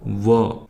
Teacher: दांत और ओठ को मिलकर व का उच्चारण होता है। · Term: दंत्योष्ठय, दंत्योष्ठयः